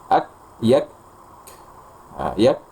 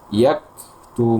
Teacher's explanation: berikan secukupnya aliran udara setelahnya atau hamsnya. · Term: huruf kaf